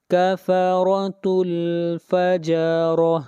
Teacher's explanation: را کو موٹا پڑھیں گے اور را کے اوپر زبر ہے